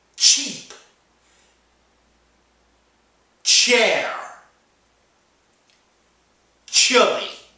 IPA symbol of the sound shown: tʃ